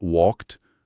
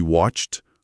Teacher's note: O segredo é que esse e do final quase nunca é falado forte.